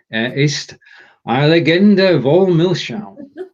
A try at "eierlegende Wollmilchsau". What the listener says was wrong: Eierlegende, not legende. Legende, if you put the emphasis on the second syllable, so legende, that would be a legend. But this is legende, eierlegende, which is an egg laying.